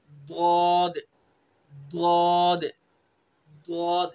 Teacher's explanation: जबान की करवट और ऊपर की दाढ़ों की जड़, इससे दौद को अदा करेंगे।